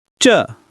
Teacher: It's a fourth tone which falls sharply.